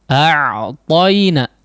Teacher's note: huruf ain ditempelkan, ya, bagian tengah tenggorokannya secara lunak, ya. Sehingga masih ada suara yang keluar di situ, ya. Meskipun tidak terlalu lama, ya, suaranya, tapi tetap masih ada. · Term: huruf ain yang disukunkan